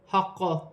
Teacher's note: ہا لام ساکن ہے، لام کو ہا کی حرکت کے ساتھ ملا کر پڑھا جائے گا، للہ الحق۔ قاف موٹے حروف میں سے ہے، مشدد ہے، وف کی صورت میں زیر گر جائے گی اور قاف ساکن ہو جائے گی، وف کی صورت میں قلقلہ پیدا ہوگا